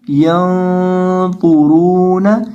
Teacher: نون کی آواز کو ناک میں چھپا کر پڑھنا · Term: اکفا مال گنہ